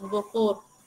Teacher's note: Catío no nasaliza a veces lo que es la O, entonces suena normal así como lo tenemos, bocor.